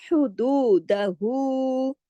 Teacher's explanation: फिर हु का पूरा हक अदा होगा वाव मद्दा के बराबर